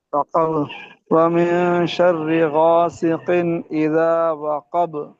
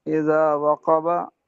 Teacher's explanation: वक़ब, वमिन शर्रि गासिकिन इज़ा वक़ब। इज़ा, जब वक़ब ठहरेंगे तो बा को साकिन कर देंगे।